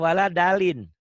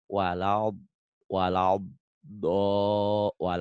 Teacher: kaya orang bersiul tapi ditutup dengan ujung lidah